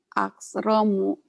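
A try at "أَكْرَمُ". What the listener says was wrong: Akramu. Hamasnya belum keluar. Akramu. Akramu. Akramu.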